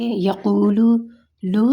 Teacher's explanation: پیش نے بالکل راؤنڈلی ایک آواز میں ہوتا ہے، بالکل گول گول آواز ہوتی ہے، جیسے یقولو، لو ہے نا، لو کا مطلب یعنی گول ہو رہی ہے آواز، زبان ہماری راؤنڈ ہو رہی ہے، بالکل گول ہو رہی ہے۔